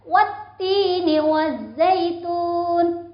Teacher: Kalau berhenti berarti huruf yang tadinya berharokat kasroh disukunkan menjadi wazaitun. Nunnya berharokat sukun. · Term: wakaf